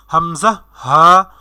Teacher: 1 number মাখরাজ হলকের শুরু থেকে উচ্চারিত হয় হামজা হা